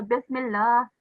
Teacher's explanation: we have vertical fatha, so you need to pronounce it for 2 seconds.